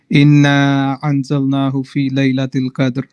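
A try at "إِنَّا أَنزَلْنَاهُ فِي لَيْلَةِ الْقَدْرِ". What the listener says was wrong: نہیں ان یہاں پہ غنہ ہونا ہے، نون کے اوپر شد ہے، نون اور اس نے لمبا ہونا ہے، اس کے اوپر مد ہے۔ انزلناہ پہ بھی میں نے ابھی چیزیں کہی ہیں کہ غنہ کریں۔ انزلنا نون ساکن پہ وہی رول ہے جو میں نے آپ لوگوں کو یہ چیزیں ساتھ ساتھ تلاوت میں بتائی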